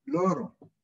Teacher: El aire ingresa y roza los laterales de la cavidad de la boca.